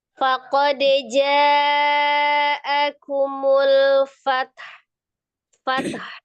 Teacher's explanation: Jangan jangan dipanjangkan, langsung disukunkan ta, sukunkan ha-nya